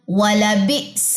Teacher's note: حمزہ جزم جھٹکا لے گا، یہاں پہ جھٹکا کریں